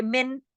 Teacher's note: نون کو ہم نے پورا کھلم کھلا اظہار کے ساتھ پڑھا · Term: اظہار حلقی